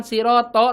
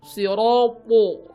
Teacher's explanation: Po juga mirip dengan huruf shad ya, sifatnya yaitu isti'la ya, pangkal lidahnya naik ya, po. Jadi bukan to tapi po.